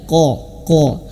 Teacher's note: persiapan ke huruf sesudahnya ahah nun mati berjumpa dengan huruf qf maka persiapan ke huruf q q itu di Pangkal lidah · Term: qof